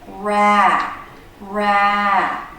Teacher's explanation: Notice how the voice goes up and down in pitch. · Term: stressed syllable